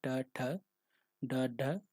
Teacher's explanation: जीभ के पतले भाग को तालु के अगले भाग में स्पर्श करके बोले जाने वाले व्यंजन क्या कहलाते हैं, मूर्धन्य व्यंजन कहलाते हैं।